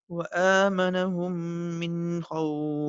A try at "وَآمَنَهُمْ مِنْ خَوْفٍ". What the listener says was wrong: نہیں, من کے اوپر دیر نہیں لگانی, من خوف.